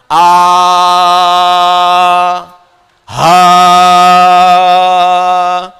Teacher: ha itu huruf yang mengambil banyak nafas